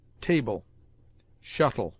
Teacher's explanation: le at the end of words is pronounced like a weak el, in which the e is almost mute